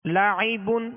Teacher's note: عین میں حمزہ کی آواز پیدا نہ ہو